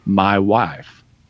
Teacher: you start with the broader a but then it transitions into the I sound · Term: vowel shift